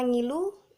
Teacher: Pada kata ngilu, bunyi N hidup, nasal, dan velar